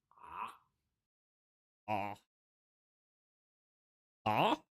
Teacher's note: The sound of an Ain is a voiced constriction of the throat. It sounds like this.